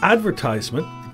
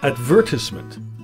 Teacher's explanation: So the Americans stress the first syllable and the British stress the second syllable.